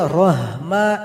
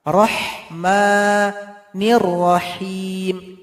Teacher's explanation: ha tipis yang pedas keluar dari tengah tenggorokan. Rahmanirrahim, ini juga him, juga ha yang keluar dari tengah tenggorokan.